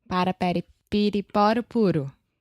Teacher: So when you're doing that, your tongue is just touching the top of your mouth really, really fast, and it's just a quick little tap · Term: flap T